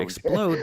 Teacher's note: in the word explode, the emphasis is on the second syllable, whereas in syrup, it's on the first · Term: accent